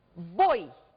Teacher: Vamos observar que nós temos aqui um O, fonema vogal, ou seja, pronunciado com maior intensidade, e o I, poderemos dizer que é um fonema semivogal pronunciado com menor intensidade.